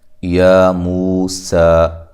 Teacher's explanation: قل تم، قاف کو موٹا، لام کو ہلانا نہیں ہے، تا کو باریک، میم ساکنہ کا اظہار ہے، یہاں غنہ نہیں کریں گے۔ یا موسیٰ، یا کھڑی زبر الف مدہ کے قائم مقام ہوتی ہے اور اس کی مقدار ایک الف کے برابر ہوتی ہے۔ مو واو مدہ ایک الف کی مقدار کے برابر۔